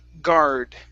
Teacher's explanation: if you don't pronounce the R, it sounds like God, like an ah sound, God. So it's guard.